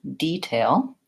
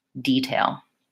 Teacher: And first of all, detail is actually has two different pronunciations. So if I'm using detail as a verb, like I'm going to detail my car, then my stress is on the first syllable, detail, and I use vowel E, detail.